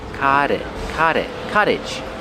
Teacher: Pronunciation, the T makes a fast D.